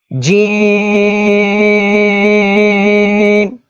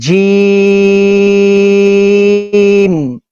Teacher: تو یہ ناک میں چلا گیا. تو یہاں پر اس کو ہم نے ناک میں نہیں پڑھنا, اس کو منہ کے اندر پڑھنا ہے. اس کا آسان طریقہ ہے کہ جو زبان کا سینٹر ہے نا, زبان کے سینٹر کو اوپر کے تالو کی طرف تھوڑا سا اٹھائیں گے تو یہ منہ کے اندر پڑا جائے گا.